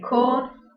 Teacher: Or, as in corn, the tongue is midway and the lips are rounded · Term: back vowels